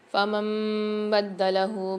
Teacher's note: نون ساکن کے بعد اقلاب والا قاعدہ اور چھوٹی سی میم آ رہی ہے تو نون کو میم کے ساتھ ملا کر پڑھیں گے غنہ کر کے